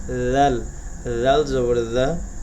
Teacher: জিহ্বার আগা সামনের উপরের দুই দাঁতের আগার সঙ্গে লাগবে।